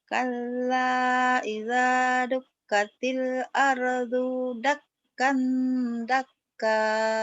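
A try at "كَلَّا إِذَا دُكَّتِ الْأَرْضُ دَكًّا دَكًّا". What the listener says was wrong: Bagus, tapi dunya pendek. Kala idza dukkatil ardu dakka dakka dunya pendek kayak kak lagi.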